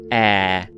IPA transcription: ɛː